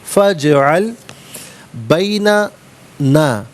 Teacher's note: فا پر زبر ہے، اسے اجعل کی جیم ساکن کے ساتھ ملائیں گے، درمیان میں سے الف یعنی حمزہ کو حذف کیا جائے گا۔ جیم حرف قلقلہ ہے تو آواز لوٹتی بھی محسوس ہونی چاہیے، فجعل نہیں، فجعل بیننا بیننا وبینک موعدا لا نخلفہ۔